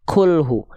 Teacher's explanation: huruf kaf ada percikan nafas